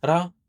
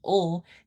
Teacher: See, the only difference between that tap ra and ul is that the tap, by definition, only taps the alveolar ridge. The only thing you need to do to change ra to ul is to hold on to it and let air out the side.